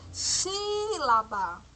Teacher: Perceberam que o si, ela demorou mais para ser pronunciada, essa sílaba? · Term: sílaba forte